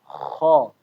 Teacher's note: Ke langit bagian lunak-lunak ya di bagian belakang menempel habis itu dia bergetar.